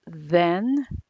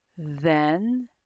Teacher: the tongue is between your teeth and air flows through the top of the tongue as it escapes between the teeth also turn your voice on since this is a voiced sound